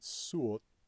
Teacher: you have both the realization of the long vowel, which is uo in Elfdalian, and you have the consonant after it preserved as long